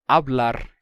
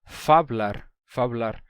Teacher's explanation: houve uma época que o espanhol não tinha perdido o f ainda e eles não diziam por exemplo eh ablar eles diziam faar